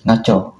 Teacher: Dalam dialek Melayu Sarawak digugurkan konsonan M dan NG berbanding dalam bahasa Melayu standard. Ini menjadikan sebutannya lebih pendek dan mudah.